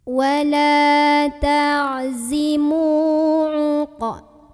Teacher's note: Mu di sini ada mad tabi'i karena ada waw sukun yang sebelumnya didahului huruf berbaris dhammah. Maka cara membunyikan huruf mim yang barisnya dhammah ini kita panjangkan sepanjang 2 harokat saja.